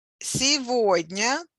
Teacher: Сегодня with a stress on the middle syllable.